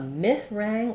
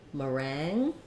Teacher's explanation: In meringue, we have second syllable stress, and it's just like the word rang, like I rang the bell. And then because the first syllable is unstressed, you're going to either have an I there, a mi rang, or a ma. I'm going to write it as ma, meringue.